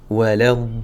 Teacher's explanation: C'est 6 temps, car j'ai un lem avec une shadda qui vient juste après. Donc ici, on va faire waladdallin.